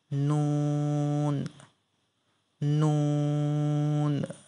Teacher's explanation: জিহ্বার আগা তার বরাবর উপরের তালুর সঙ্গে লাগাইয়া